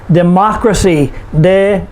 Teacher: For example, democracy, democracy, 4 syllables. We put the stress on the third to the last syllable, which is ma, democracy.